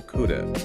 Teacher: But in fast speech, could have [music] just melts into coulda or even could have, the h sound is gone. The vowel is reduced.